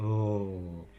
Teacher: a sound made in the alveolar position with the air going laterally around the tongue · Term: lateral liquid